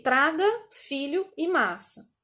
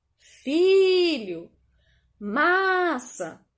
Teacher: Em todas foi a penúltima sílaba a mais forte. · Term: paroxítonas